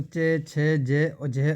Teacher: जो च वर्ग वाले हैं दोस्तों दोस्तों वे जो तालव्य से बोले जाते हैं